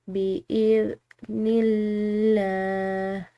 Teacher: لفظ اللہ کی لام باریک پڑھیں گے کیونکہ نون کی زیر ہے